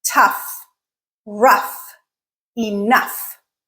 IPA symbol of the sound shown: ʌf